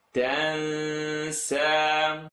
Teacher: So noon sukoon followed by a letter that's not in the throat, and it's the letter sin, tongue not touch.